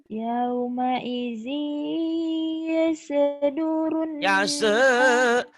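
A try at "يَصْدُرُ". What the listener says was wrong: Yase, yase, nggak boleh ada yase, yas.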